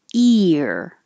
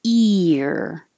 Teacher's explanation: you're going from a very high e position and sliding down and back for the r